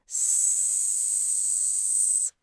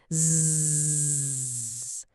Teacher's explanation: The only thing that changes is whether your vocal cords are humming. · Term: voiced sound